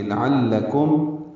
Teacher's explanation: عین وسط حلق سے ادا ہوگا، لام دونوں باریک ہیں، کاف بھی باریک پڑ جائے گا، میم ساکن پہ اظہار شفوی ہے۔